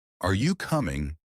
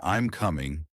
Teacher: if you're asking a question like are you coming your voice should rise at the end but if you're making a statement like I'm coming your voice usually Falls